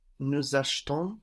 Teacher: we can have a disappeared E or just a very weak E, nous achetons, because it's not taking the accent.